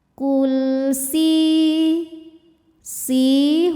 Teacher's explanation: Qul si hukum tajwidnya adalah mad tabi'i dhahiri sebab ada ya sukun yang sebelumnya berharokat kasrah. Cara bacanya, sin ini kita panjangkan 2 harokat saja.